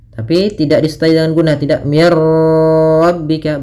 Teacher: Idgham tanpa disertai dengan gunnah. Berarti hanya idghamnya saja. Idgham itu memasukkan, maka masukkan nun ke ra sehingga suara nunnya hilang. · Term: bila gunnah